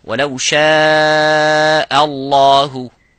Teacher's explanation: Both of these letters, this hamza and the هَا, have to be مُرَقَّق, which is empty mouth. So only the لفظ الجلالة have to be full mouth.